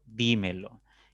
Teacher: a analizarlo ya como una palabra esdrújula por ejemplo dímelo y tendrá tres sílabas la tercera tiene la mayor fuerza